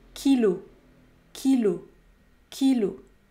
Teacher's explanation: le mot kilo se termine par la voyelle o il faut donc prononcer le O fermé